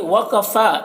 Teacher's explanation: فا میں کھڑا زبر ہے تو اسے ایک الف کے برابر کھینچیں گے